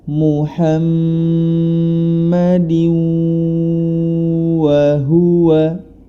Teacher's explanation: Huruf dal berharokat kasroh tani bertemu dengan huruf waw, maka cara membacanya yakni dimasukkan ke dalam huruf berikutnya disertai dengan gunnah atau dengung.